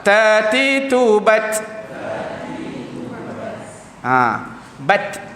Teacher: huruf ta ni yang mana letakkan makhraj dia betul-betul di gusi